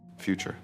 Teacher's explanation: The ta creates a ch sound